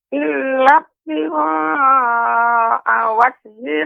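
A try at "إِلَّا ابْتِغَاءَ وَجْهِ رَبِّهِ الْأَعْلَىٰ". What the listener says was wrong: ya, yang ini Nek malah tidak nampak qalqalahnya. Illa ibtigha, ini juga kurang Nek. Illa betigha, illa betigha wajhi rabbihil a'la. Jadi huruf ba ketika sukun maka dia menjadi qalqalah, sifatnya qalqalah tapi tidak ada hamzah di akhirnya. Illa betigha. Tidak illa betigha.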